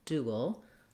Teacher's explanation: it's still moving from an oo to a dark l